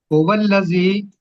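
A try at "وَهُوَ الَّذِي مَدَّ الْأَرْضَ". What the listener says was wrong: واو بھی پڑھے نا، واو بھی ہے، واہ اللہ.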